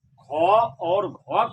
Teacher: इस दोनों वर्ण का उच्चारण करने पर हकार की ध्वनि आती है। ख और घ का उच्चारण करने पर हकार की ध्वनि आती है। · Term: महाप्राण वर्ण